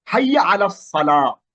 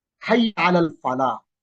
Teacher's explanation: এখানে সদ এটা হরুফু শামসিয়া, শামসি হরফ, এই কারণে লামটা ওখানে উচ্চারিত হয় নাই। কিন্তু হাইয়া আলাল ফালাহ এখানে ফাট আসছে আলিফ লামের পরে, এই কারণে এখানে এই আলিফ লামটা উচ্চারিত হয়েছে। · তাহলে এই আলিফ লামগুলো উচ্চারিত হয়, পরে ডাইরেক্ট তাসদীদটা চলে আসে না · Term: চন্দ্রাক্ষর